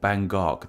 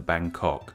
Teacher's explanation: in English we put the G sound at the end of the first syllable · the G sound actually goes at the start of the second syllable